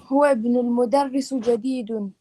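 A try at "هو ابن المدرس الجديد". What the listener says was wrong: Okay, sisters, one thing we've got to stop doing is getting pronouncing the tanween on the end of words that have alif lam. This is a real no-no. This is like major mistake.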